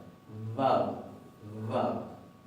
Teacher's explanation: Pero es una B corta que es labiodental, como nosotros pronunciábamos antes en un castellano más clásico y más tradicional, pero más suave. · Se va a pronunciar como B o como V, como una cosa intermedia entre B corta y F. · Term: V corta